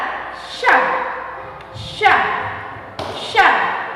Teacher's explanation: pada huruf sya dilapaskan dengan mempertemukan lidah bagian tengah dengan langit-langit atas.